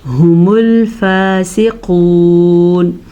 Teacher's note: सीने से आवाज निकलती है। हलक के आखिरी हिस्से से हु मूल ऐसे भी नहीं पढ़ना। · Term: हा के मखरज